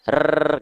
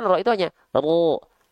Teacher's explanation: huruf R itu lebih menuntut banyak getaran. R gitu ya. Sedangkan huruf ro itu dia tidak menuntut banyak getaran. Ya, ro itu gak menuntut banyak getaran sahabatku sekalian.